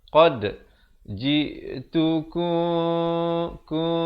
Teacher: Ikhfa syafawi dibacakan dengan bibir dibiarkan renggang sikit. Ku 2 harakat.